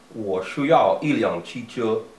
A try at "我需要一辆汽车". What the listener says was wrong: You're still saying shu a little weird. You said shu. Shu. Yeah, shu. Just your tongue is straight than what you are. Just a little bit straight, not too straight. 我需要一辆汽车.